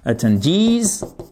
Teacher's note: j'exagère le stress, l'accent tonique, mais pour bien vous montrer qu'il est sur la dernière syllabe